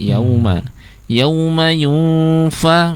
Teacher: ketika bunyi dengungnya itu bibir bawah bagian dalam langsung menempel ke gigi seri bagian atas, seolah-olah akan mengucapkan huruf fa ya, langsung masuk ke sana.